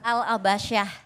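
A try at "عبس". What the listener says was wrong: Harus dibenahin sedikit, nggak pakai al ya. Abasa.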